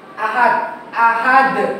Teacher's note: huruf qalqalah sukun karena wakaf berhenti di akhir kalimat dan dibacanya secara keras atau pantul dengan kuat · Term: qalqalah kubra